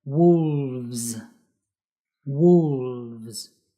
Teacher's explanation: notice how we need to use the slightly vibrating lead and the S sound like a buzzing sound